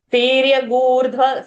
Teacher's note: Gurdhva, we are holding that dirgha